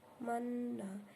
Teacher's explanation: mengkombinasikan harkat fathah dengan domah disertai monyong di bibir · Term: ismam